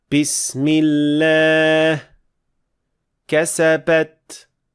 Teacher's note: birinchi keng tarqalgan xato bu ba jarangsiz pa tovushi sifatida aytish. Holbuki to'g'ri ba jarangli tovishdir.